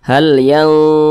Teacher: pangkal lisan kita naik terangkat ke atas ketika Kita mengucapkannya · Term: dibaca tebal